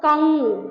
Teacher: मुख और नाक दोनों से उच्चारित हो रहा है। ये अनुस्वार मतलब हो गया, ये अनुस्वार।